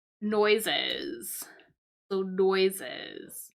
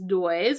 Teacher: the moment that we add this s on to it it actually picks on another syllable so we add an additional syllable